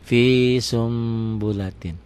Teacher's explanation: Bunyi n-nya berubah menjadi m, samar sedikit seperti ikhfa sapawi, seperti ikhfa saat membunyikan fa. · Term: iklab